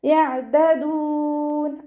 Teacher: ഐന് കൽക്കലയുടെ ലെറ്ററില്ലാത്തത് കൊണ്ട് ഹഫ് സുക്കൂന് കൊടുക്കുക. ലൈറ്റാക്കിയിട്ട് ഉച്ചരിക്കുക കേട്ടോ.